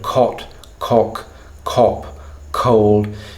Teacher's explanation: the dorsal region of your tongue is kinking up and coming up into contact with what we call your soft palate in phonetics, right? Say k, any word, cot, cock, cop, cold.